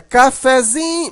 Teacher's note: Mas na hora que você transforma essa palavra para cafezinho, você observa que o fé, ele não é tão fraco, mas ele também não é tão forte como o zin. A sílaba mais forte aqui é o zin, né? Cafezinho, mas o fé continua um pouquinho forte. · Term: sílaba subtônica